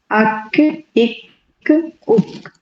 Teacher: की होगी अक इक उक और जो छोटी वाली काफ है उसमें सॉफ्ट और हार्ड पैेट दोनों से टच होगा जबान का जो आखरी हिस्सा है · جو چھوٹی والی کاف ہے اس میں سافٹ اور ہارڈ پیلٹ دونوں سے ٹچ ہوگا زبان کا جو آخری حصہ ہے